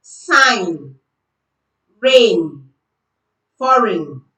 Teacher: We don't use G. We only use the N sound because G comes before N. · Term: silent G